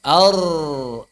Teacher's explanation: Sama cara menebalkannya dengan lam, dengan huruf-huruf tebal yang lain, ada cekungan di tengah lidah, ada pangkal lidah yang naik ke arah langit-langit dan ada tekanan pada faring